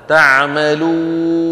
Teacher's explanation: لابد من أن نترك فتحة الواو واسعة قليلا هكذا